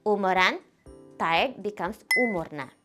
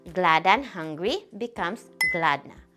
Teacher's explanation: When the last syllable has a before a consonant, that a disappears.